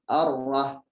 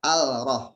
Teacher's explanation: Alif lamnya sama sekali tidak terdengar ya. Jadi ini masuk ke hukum alif lam syamsiyah.